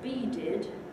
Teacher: that d in the middle of the vowels there in the middle of the word is fully voiced